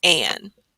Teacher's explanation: it's a little bit of a whiny A next to that consonant N, and it says an